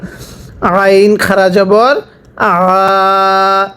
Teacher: আইনটা উচ্চারণের সময় গলার মধ্যে চাপ দিয়ে পড়তে হবে।